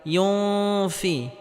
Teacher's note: নুন সাকিনের পরে ইকফার হরফ ফা আসার কারণে এখানে ইকফা গন্না করে পড়তে হবে